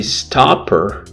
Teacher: stopper is not as much aspirated because it's not stressed